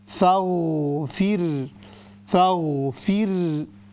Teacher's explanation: this ra will be thin because it has a khasra before it.